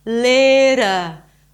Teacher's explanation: It's not little, it's not a dark D. It's this very light D sound that actually sounds like a R sound, like a Spanish R. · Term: flapped